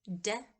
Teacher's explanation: d is the voiced alveolar stop.